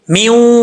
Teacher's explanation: میم کو جب واؤ سے ملائیں گے نون تو گر جائے گا، اور واؤ کو پڑھتے وقت جب تک ہونٹ گول نہیں ہوں گے وہ نہیں پڑھا جائے گا